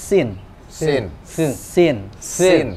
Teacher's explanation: ujung lidah bertemu dengan belakang gigi seri bawah jadi ujung lidah bertemu dengan belakang gigi seri belakangnya bukan ujungnya